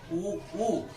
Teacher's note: ऊ ओष्ठ गोलाकार बन रहे हैं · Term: वृत्ताकार